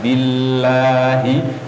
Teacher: Meskipun tidak ada tanda panjangnya, tapi semua lafaz Allah namanya lafzul jalalah selalu dibaca panjang. Jadi billahi panjang dua harakat. Billahi meskipun tidak ada alifnya.